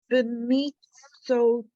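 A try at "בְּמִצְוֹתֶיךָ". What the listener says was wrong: So this is we pronounce this Vav. It's Vav.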